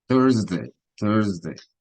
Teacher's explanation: now when I want to say Thursday I make the r very strong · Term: r sound